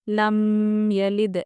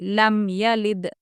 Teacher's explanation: دیکھیے، میم ساکن کے بعد با اور میم کے علاوہ کوئی دوسرا حرف ہوگا تو وہاں پر ہم کیا کریں گے؟ میم کی آواز کو ظاہر کریں گے، یعنی یہاں پر ہم غنہ نہیں کریں گے، ٹھہریں گے نہیں۔ لم یلد ایسے نہیں پڑھیں گے، لم یلد جلدی پڑھیں گے۔ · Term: اظہار شفوی